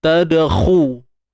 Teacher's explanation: kha ni baris depan. Jadi kena muncung bibir mulut. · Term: huruf isti'la